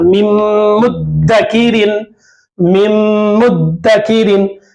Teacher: नून की आवाज को मीम से मिलाना और नून की आवाज नहीं आना, मीम की आवाज आना